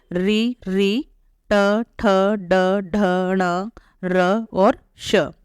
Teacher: इन वर्णों का उच्चारण करते समय जीवा मुर्धा को टच करेगी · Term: मुर्धन्य वर्ण, मूर्धन्य वर्ण